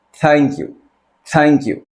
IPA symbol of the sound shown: θ